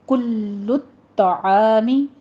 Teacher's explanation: لام کے اوپر صرف آپ نے تشدید کرنی ہے، آگے طا پہ بھی تشدید کرنی ہے، سختی سے ادا کریں گے دونوں کو